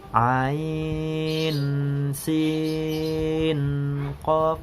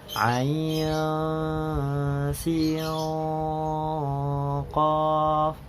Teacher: di bagian pengucapan nun sukunnya itu dibaca ikhfa ataupun didengungkan. Jadi tidak diizharkan ya.